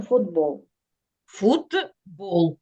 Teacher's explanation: глухий приголосний в даному випадку Т стоїть перед дзвінким він уподібнюється до нього